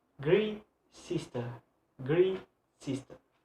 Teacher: the stress is sometimes placed on the second words that is on the noun